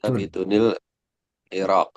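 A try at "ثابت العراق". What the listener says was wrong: Nggak usah pakai ini, nggak usah pakai nun. Sabit al-Iraq aja. Taruh kata sabit al-Iraq.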